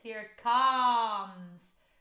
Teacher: adapting the vowel sounds to make it sort of higher, brighter, further forward in your mouth compared to speech